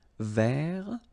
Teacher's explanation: masculine form, don't pronounce the final T